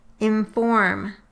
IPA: ɪ̃ɱfɔrm